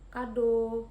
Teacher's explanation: vokal O, madiah atas belakang dengan posisi mulut. semi tertutup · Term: vokal O madiyah atas belakang